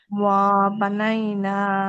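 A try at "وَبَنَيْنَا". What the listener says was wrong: ওয়াই টান হবে না। ওয়া বানাইনা।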